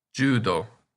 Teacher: I said before that the Dakuten change S to Z, but in this case, Shi gets changed to Ji